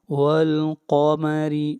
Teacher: قاف حرف مستعلیہ میں سے ہے، موٹا پڑھیں گے اور را کو باریک پڑھیں گے